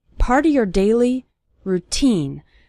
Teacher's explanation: The syllable teen is stressed in the word routine.